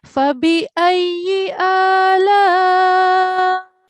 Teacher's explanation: lam and alif, we have madul kabir. So that needs to be between 4 to 6 seconds.